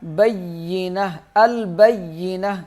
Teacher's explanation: میم لام سے ملے گا، بینہ، البینہ، یا سخت پڑھیں گے، تا کو ہا بنا دیں گے جب وقف کریں گے